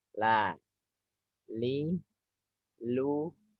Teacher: lam ini ujung Sisi lidah ya jadi lidahnya agak melebar juga tapi di depan yang nempel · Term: huruf lam